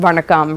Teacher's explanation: in Tamil, you do get a retroflex nasal just on its own without a stop following